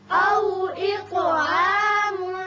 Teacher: یہاں طا کی صفت قلقلہ اور اس کو پر بھی پڑھیں گے